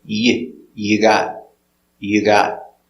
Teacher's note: With a T, with a Y sound, the y, t, together, ch, gotcha, gotcha.